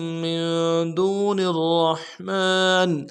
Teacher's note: واو مدہ ایک الف دال میں کھینچیں گے